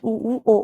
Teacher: वृत मुखी जिसमें होठ गोल हो जाएंगे